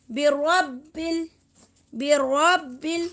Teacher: را کو موٹا پڑھیں گے، با سے ملائیں گے